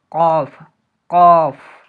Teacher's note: জিভের গোড়া এবং তার বরাবর উপরের তালুর সাথে উচ্চারিত করতে হবে